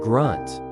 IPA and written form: ɡrʌnt (grunt)